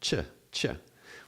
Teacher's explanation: there are two sounds actually in the sound ch is uh a t and a sh together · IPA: tʃ